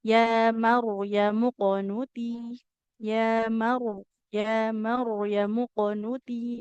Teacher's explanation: di kata Maryam ya Maryamu huruf ro sukunnya kita baca tebal ya. Nah pernah dibahas ya sebelumnya bahwasanya apabila kita bertemu dengan huruf ra sukun yang didahului harakat fathah huruf rnya kita baca tebal ya.